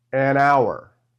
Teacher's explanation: Because the letter h is silent, okay? The word sounds like it begins with a vowel sound